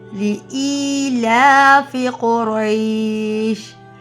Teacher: ایلا کھڑی زیر اور کھڑی زبر دونوں لمبا کرنا ہے